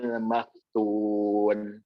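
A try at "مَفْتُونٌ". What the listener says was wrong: Nah, tangan jangan tebal ya. Maftu ada hamsnya tetap. Jadi tak berharakat kepada hams. Cuman tingkatan hamsnya atau kadar hamsnya tidak seperti ketika ketika suku. Sama sih, sama cuman cara kadar kejelasan. Tetap ada hamsnya.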